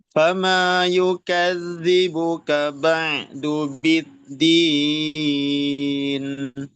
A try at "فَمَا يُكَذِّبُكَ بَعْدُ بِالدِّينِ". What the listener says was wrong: Hamas kafnya belum keluar, Pak. Yukadzibuka. Yukadzibuka. Kafnya jangan sampai hilang ya hamisnya. Karena kau fathah sih nggak ada masalah ya. Karena beda dengan kof. Tapi nanti kalau sudah kasroh dengan domah, nah ini agak merepotkan ya.